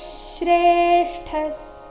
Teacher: ವಿಸರ್ಗದ ಉಚ್ಚಾರಣೆ ಇಲ್ಲಿ ಅರ್ಧಸ ಆಗಿದೆ